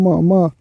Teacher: म जो है ओठ से बोला जाता है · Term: ओष्ठ